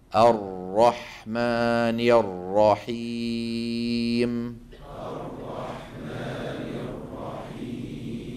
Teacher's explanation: التكرير التكرير نرى امامنا على اللوحه تعريفه هو ارتعاد طرف اللسان بالرائي ارتعاد خفيا